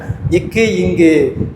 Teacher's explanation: இக்கு இங்கு நாவின் முதற்பகுதி அன்னத்தின் அடிப்பகுதியை தொடுதல்